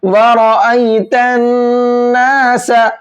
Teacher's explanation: وَرَأَيْتَ النَّاسَ، یہاں پر 2 قاعدوں کو سمجھیے گا۔ پہلے تو را کو موٹا کر کے پڑھیں گے کیونکہ را کے اوپر یہاں زبر ہے، اور را پر زبر ہوتا ہے تو موٹا کر کے پڑھتے ہیں۔